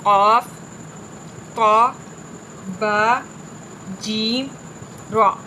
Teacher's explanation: قلقلہ میں آواز سخت، جنبش کی طرح نکلے گی